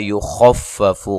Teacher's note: خا کو موٹا ادا کرنا ہے اور لمبا نہیں کرنا ان دونوں کو